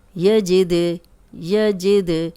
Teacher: अब दाल पे जज़म आ गई है, हिला के पढ़ रहे हैं क्योंकि ये कलकला वाला हर्फ है।